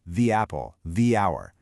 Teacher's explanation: But before a vowel sound, it actually stretches into a long e sound. And native speakers will often automatically add a tiny little ya sound just to link them together. So, it becomes the apple, the hour.